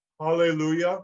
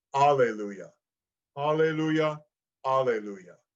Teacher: You can put a little slight H before it, Alleluia, which opens the vocal folds gently, or you can do a glottal stop